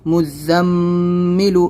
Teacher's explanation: میم پر تشدید تو غنہ بھی ہوگا